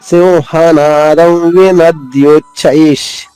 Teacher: ఇది ద్విత్వాక్షరము. విసర్గ ఉచ్చారణ ష బ్రాకెట్లో ఉన్న అక్షరమే తాళవ్య ష అంటే శంకరలో పలికే ష చెప్పాలి.